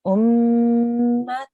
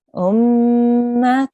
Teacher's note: we have a soft nasal sound at the end as well.